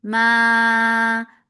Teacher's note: mad munfasil jaiz, and don't keep the sound in your nose when you are stretching it.